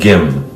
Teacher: In English, it's an M. Now, it's written with a K in English, but in Korean, it's closer to a G